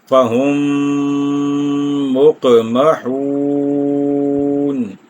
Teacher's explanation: فَهُمْ اس کے آخر میں میم ساکن، اور مقمحون کے شروع میں میم متحرک، تو ادغام شفوی ہو جائے گا، یعنی یہاں پر 1 الف یا 2 حرکات کی مقدار ٹھہر کر آگے چلیں گے۔